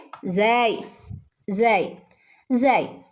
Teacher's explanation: സ വരുന്നത് നാവിന്റെ അറ്റവും മുൻപല്ലുകളുടെ ഇടയും ചേർന്നിട്ടാണ്